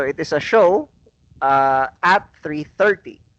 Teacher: So notice the emphasis on 3:30. So the emphasis is on 3:30 because that is the most important information in that statement. So it is a show at 3:30.